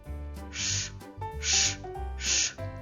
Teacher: Він приголосний, твердий. На звуковій схемі позначаємо його однією рискою. І ще цей звук глухий.